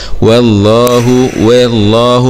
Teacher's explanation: مع تفخيم اللام لأنها جاءت بعد حرف مفتوح